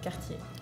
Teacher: We do not really pronounce the last R.